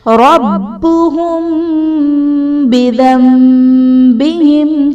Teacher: میم ساکن کے بعد جب حرف با آ جائے تو وہاں پر اخفاء شفوی کا قاعدہ ہوگا، یعنی میم ساکن میں ہم غنہ کر کے پڑھیں گے